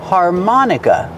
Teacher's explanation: Put the stress on the second syllable. Har, like car and far, har.